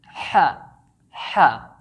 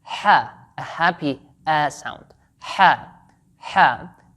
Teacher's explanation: So the letter Ha is pronounced from the middle of your throat, not the top part or the bottom part. It's pronounced using the middle part of your throat, like saying ha, ha.